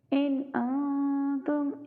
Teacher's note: ہم اظہار کریں گے کیونکہ آگے حروف حلقی میں سے حمزہ ہے